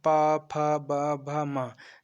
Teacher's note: हमारी जो ओठ है वो दोनों टकरा रही हैं, इसलिए इसे हम पा वर्ग में रखा गया है और इसे ओष्ठ भी कहते हैं।